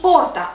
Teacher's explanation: it has the accent on the second syllable from the end. And in this case, the tonus will drop.